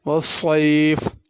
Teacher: الشتاء، الف پر مد ہے، الف کو کھینچ کر پڑھنا، الشتاء نہیں پڑھنا۔ والصیف، صیف میں صاد ہے، اس کو پر کر کے پڑھنا، والسیف نہیں پڑھنا